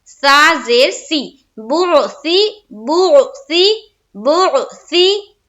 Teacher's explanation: बा को फिर आयन से मिलाएंगे पेश की हरकत के साथ, बो, सा जेर सी, मजहूल से बचेंगे और मारूफ पढ़ेंगे, यानी कि सा जेर से नहीं, सा जेर सी